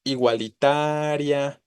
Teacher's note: Y en ese sentido, pues tengo la terminación IA, ¿no? Pero no está sonando fuerte la I, no se encuentra ahí la tonicidad